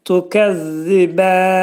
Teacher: Dil 2 dişin arasına girərək, xəfif şəkildə girərək, pəltək zə hərfinin məxrəcini çıxarırıq.